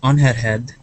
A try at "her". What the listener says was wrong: So that her, it's actually not hair because that sounds like hair, right? You want to say her.